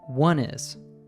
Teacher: the N sound from one is linked to the following word